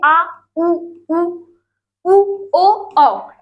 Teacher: जब स्वर आपके पीछे से निकलेंगे तो क्या हो जाएगा, पश्च स्वर